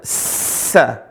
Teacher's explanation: Sa, desisnya begitu keras. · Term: huruf sin